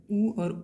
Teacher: उ और उ का ओठ से उच्चारण हो रहा है